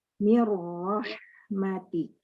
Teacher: detik gitu tahannya Iya eh di sini menjadi ada dua ya dengan adanya syadah berarti kita harus membaca ro itu seperti dua kali pertama ro yang dengan sukun kedua ro dengan harakat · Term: nunnya sudah melebur